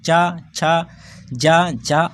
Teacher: जो हमारा चा वर्ग है, चा वर्ग हमारा तालब से बोला जाएगा। चा आप अगर चा बोलेंगे तो आपकी जो जीभ के ऊपर वाला भाग है वहाँ पर आपकी जीभ छू रही होगी।